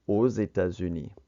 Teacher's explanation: And on the last one, you can see that États-Unis is plural. That's why the X carries across, and it sounds like a Z